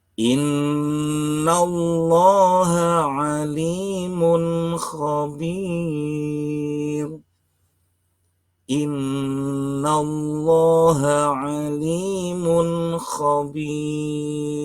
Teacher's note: Nun yang bertasdid ini adalah bacaan gunnah, 2 ketuk.